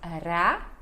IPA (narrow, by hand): ɾa